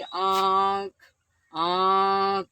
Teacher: इसके उच्चारण में हवा, नाक तथा मुख दोनों के दबाव से बाहर निकलती है। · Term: अनुनासिक